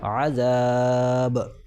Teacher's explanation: حرف مدہ کے بعد سکون وقف کی وجہ سے آ رہا ہے، لہٰذا یہاں پر مد ہوگا اور 3 الف کے برابر کھینچ کر پڑھا جائے گا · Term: مد سکون عارضی وقفی